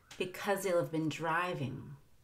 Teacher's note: If I want to, I can take out the H in he and link the end of because to that word, and it'll sound like because he'll, zeal.